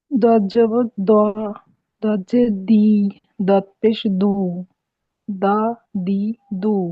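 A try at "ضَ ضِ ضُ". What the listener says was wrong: দা দি না, দ দি, দ দি দু। হ্যাঁ, দজ জবর দা হয় না কখনো, দজ জবর কি হবে দ।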